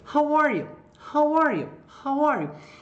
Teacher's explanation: você vai dar ênfase para o how, para as palavrinhas com WH, tá? Então você, how are you? E o you vai cair a entonação.